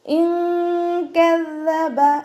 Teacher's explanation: നൂൻ സാക്കിനയ്ക്ക് ശേഷം കാഫ് വന്നു. ഇഖ്ഫായിൻ്റെ അക്ഷരമായിട്ടുള്ള കാഫ് വന്നതുകൊണ്ട് നൂൻ സാക്കിനയെ മറച്ചു വെച്ചിട്ട് മണിച്ചോതി കൊടുക്കുക